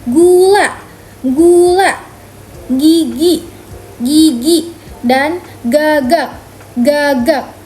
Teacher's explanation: Untuk melafalkan huruf G dengan benar, yang pertama, letakkan bagian lidah ke langit-langit belakang mulut. Lalu, tahan udara sejenak, kemudian lepaskan sambil menggetarkan pita suara. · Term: G keras